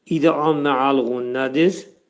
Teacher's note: Yəni burunda kəskin surətdə sıxılacaq. Bu nun hərfləri iki saniyə müddətində sıxılacaq.